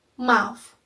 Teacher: Its voice sound and its place of articulation is bilabial because when we articulate it, our both lips is touching each other, and its manner of articulation is nasal.